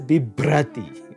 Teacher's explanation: notice here that the vocalic r has switched to a consonant